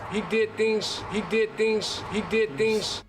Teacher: So the Z sounds at the end of words turn into more of an S sound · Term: devoicing